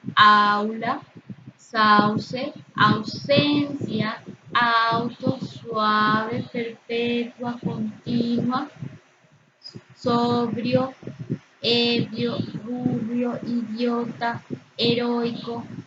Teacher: Todas estas son exactamente la unión de una vocal abierta, como la A y la O, con una vocal cerrada que es la U y la I, que forman diptongo porque las cerradas, la I y la U, no están acentuadas ortográficamente.